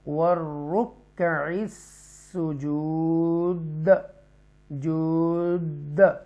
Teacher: تو یہاں پر حروف کلکلہ میں سے دال ہے تو اس لیے وقف کی صورت میں اور جزم کی صورت میں اس کو جود پڑھیں گے